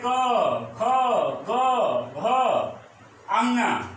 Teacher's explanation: तो क वर्ग के सभी वर्ण कंठ से उच्चारित होंगे, जैसे क, ख, ग, घ, अंगा ये कंठ से उच्चारित होंगे।